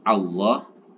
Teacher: tebal Allah bukan Illah karena di awal dari lafaz Allah ini didahului dengan huruf berharakat fathah maka lafaz Allah dibaca tebal